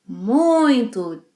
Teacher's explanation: nasalize the I sound in this word. Yes, and this is the standard pronunciation in Brazilian Portuguese.